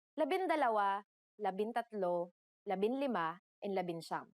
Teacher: However, NG sometimes changes its form depending on the letter that follows it. For the letters D, L, R, S, and T, the G from NG is dropped to make it easier to pronounce.